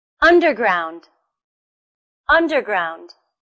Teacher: Where's the stress? It's also on the first syllable.